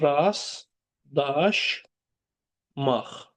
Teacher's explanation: T düşür. Burdakı t. L da D-ya çevrilir. L da D-ya çevrilir. Axırdakı Q da X-ya çevrilir.